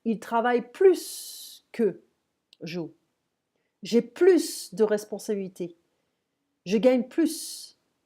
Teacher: At the end of the sentence, we can pronounce the S because usually we don't pronounce it, okay, but here we can.